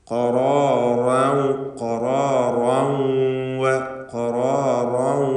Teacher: എന്നാൽ ചേർത്ത് ഓതുകയാണെങ്കിൽ ഖറാറൗ, ഖറാറൗ, ഖറാറൗ എന്ന് റാഇൻ്റെ തൻവീനിനെ ഇദ്ഗാം ബിഗുന്ന നാഖിസ് നൽകി വാവിലേക്ക് ലയിപ്പിച്ച് മണിക്കണം